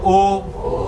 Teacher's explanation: ओ कंठातून आला ओठ गोल झाले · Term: कंठ ओष्ट, कंठ्य ओष्ठ